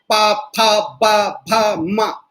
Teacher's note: पा फा इसमें होठ पे पूरी अवरुद्ध होती है